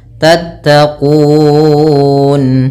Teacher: mim mati bertemu ta, izhar syafawi kembali, yaitu suara mimnya harus dibaca dengan jelas